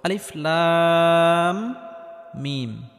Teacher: এই লাম হরফটি 4 আলিফ পরিমাণ লম্বা করে টানার পর মিম হরফটির সাথে গিয়ে লাগবে, কারণ মিমের উপর তাসদিদ রয়েছে। আর মিমটি গুন্নাহ করে পড়তে হবে, কারণ মিমে বা নুনে তাসদিদ হলে গুন্নাহ করে পড়তে হয়। · এখানে লামটি 4 আলিফ পরিমাণ লম্বা করে টানতে হবে, কারণ কোনো হরফের উপর যদি মোটা চিহ্ন থাকে তাহলে সেই হরফটি 4 আলিফ পরিমাণ লম্বা করে টেনে পড়তে হয়।